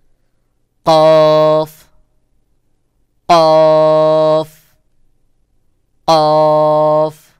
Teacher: কফের আওয়াজ শক্ত করে গোল মতো করে উচ্চারণ হবে।